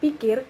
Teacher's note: bunyi P ini akan terpengaruh oleh bunyi I sehingga ucapan untuk P ini akan sedikit banyak sudah diwarnai oleh bunyi I, yakni kedua bibir sudah mulai melebar pada saat bunyi P diucapkan